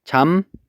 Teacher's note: 잡목은 발음하면 잠목이라고 발음이 된다고 했었죠. 그러면 요 비읍이 결국에는 미음으로 바뀌었습니다